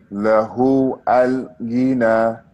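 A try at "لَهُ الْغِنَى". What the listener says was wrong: I told you when we connect the words together, we will not pronounce Hamza to wasl. We call this Hamza to wasl. We will not pronounce it. Lahul. Lahul. Lahul gina. Lahul gina. When we connect the words together, we will not pronounce that, okay? If we start with it, we will pronounce the L.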